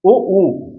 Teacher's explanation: ओ ऊ, जीभ नीचे वाले दांतों से ही लगी है, ध्वनि गले से बन रही है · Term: पश्च